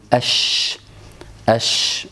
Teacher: الشين التي فيها تفشي على رأي بعض أهل العلم، وفيها همس وفيها رخاوة، وبالتالي دائما نجد وجود فتحة قليلة يخرج منها الهواء، وبالتالي يخرج معها الصوت بين وسط اللسان يعني أقبل قليلا ومن الأمام قليلا فيما يتعلق بالجيم، مع بقاء تلك الثغرة فيخرج حرف الشين واضحا سالما بينا في هذا.